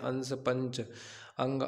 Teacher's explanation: अनुस्वार एक व्यंजन ध्वनि इसके उच्चारण में नाक से अधिक सांस निकलती है और मुख से कम निकलती है